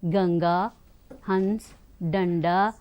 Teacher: अनुस्वार जब हम उच्चारित करते हैं तो अनुस्वार के उच्चारण करते समय हवा केवल नाक से बाहर आती है